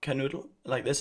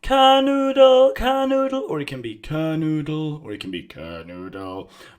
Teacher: But I'm not changing the tone. I'm not going up or down and up or up and down. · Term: first tone